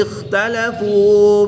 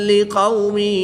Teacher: قاف اور خا حروف مستعلیہ میں سے ہیں، ان کو پر یعنی موٹا پڑھیں گے